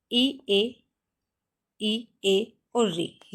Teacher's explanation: इ ए इ ए और ऋ जीभ के आगे के भाग से बोले जाते हैं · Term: अगर स्वर